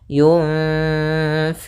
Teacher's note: nunnya kita samarkan kepada huruf fa, kemudian ditahan dengungannya atau gunnahnya. Sepanjang 2 harokat. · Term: ikhfa